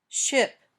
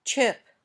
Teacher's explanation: you say when you say shh there should be no movement when you say sh you can continue to make the sound for a long time